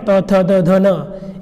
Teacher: दंत व्यंजन है जिनको बोलते समय हमारा जो जिह्वा है वो दांत को स्पर्श करती है